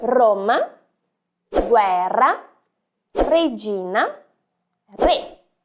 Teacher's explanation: Perceba que a sua língua no italiano, ela sobe e treme. Roma, Roma. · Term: som mais tremido